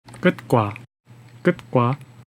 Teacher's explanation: 왔을 때는 보통 연음 이 되지 못하고 t 그새 발음할 때 혀를 입천장에 붙인 상태에서 호흡을 멈추고 터뜨리지 않게 됩니다